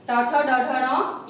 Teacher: मूर्धा को जो व्यंजन छूते हैं अर्थात ट वर्ग के, इसलिए इन्हें कहा गया है मूर्धन्य